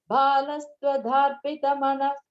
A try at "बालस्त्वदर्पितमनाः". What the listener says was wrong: Balastvadharpitamana, not darp. Tvad arpitam. Tvadarpitam.